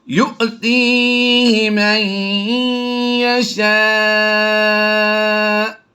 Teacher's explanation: نون کو ہم نے یا میں ضم کر دیا ہے اور غنہ کی آواز دے دی ہے۔ یؤتیہ من یشاء، جھٹکا دے دیا۔